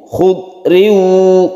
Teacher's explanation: karena ini kasroten bertemu dengan wawu, otomatis suaranya itu i menjadi u. Khud riu, ketika riu itu kita panjangkan. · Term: idgham biguna